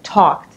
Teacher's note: So you have to say t, not d, right? Talked, because k is unvoiced.